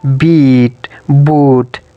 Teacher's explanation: the position of tongue is high when the speaker produces vowels like e, oo, in words like beat, boot